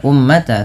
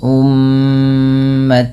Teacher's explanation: mim berharakat tasdid ini ditahan dulu bunyi suara mnya sepanjang dua harakat karena terdapat hukum tajwid berupa bacaan gunah Maka jangan hanya sekedar